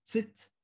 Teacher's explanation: en realidad TS, digamos un fonema fricado alveolar